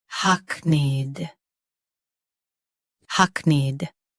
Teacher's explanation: Both US and UK have the same pronunciation of this word. Stress hack. Keep need soft and quick.